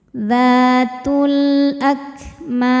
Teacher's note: Dzatul, kemudian ada alif lam qamariyah, karena alif lam menghadapi huruf qamariyah yaitu hamzah maka lam dibaca jelas. Dzatul akmam, ketika berhenti mam hukumnya mad arid li sukun, karena mad tabi'i bertemu dengan huruf yang disukunkan karena waqaf.